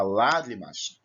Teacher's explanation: Quando você fala a palavra lágrimas, você percebe que o lá, você prolonga a sílaba na pronúncia, você percebe que você tem uma corrente de ar mais forte que vem, assim você demora um pouco mais e tem mais intensidade nessa sílaba. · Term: sílaba tônica